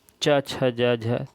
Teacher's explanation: तालु से बोले जाने वाले च छ ज झ तालव्य वर्ण